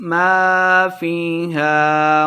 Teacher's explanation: ما الف مد ہے، 2 حرکات لمبا کر کے پڑھیں گے۔ فیہا فی یا مد ہے، 2 حرکات لمبا کرنا ہے۔